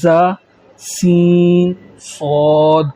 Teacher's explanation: زا، سین، صاد کو ادا کرتے وقت سیٹی کی طرح تیز آواز نکلتی ہے، اس لیے ان حروف کو حروف صفیریہ یعنی سیٹی والے حروف کہتے ہیں۔